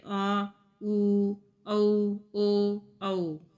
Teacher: इन स्वरों के उच्चारण में ओठों का आकार गोल हो जाता है। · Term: वृत्तामुखी स्वर